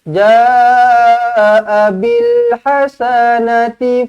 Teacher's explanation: ja dibaca dengan panjang 4 atau 5 harakat